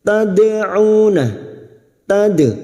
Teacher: dal sukun yang mati asli di tengah kalimat qalqalah sugra. Tad'una, tad, dadidubad, jangan sampai tidak terasa ya pantulannya, walaupun qalqalah sugra tetapi pada saat dipantulkan harus tetap terasa pantulannya.